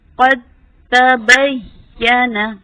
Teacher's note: قاف کی زبر کو تا کے ساتھ ملایا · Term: ادغام